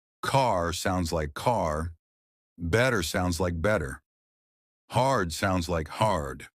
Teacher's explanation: Unlike British English, Americans stretch their R sounds. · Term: The secret R sound